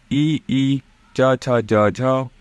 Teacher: इन सभी का जो कि उच्चारण स्थान है वो है आपका तालव्य से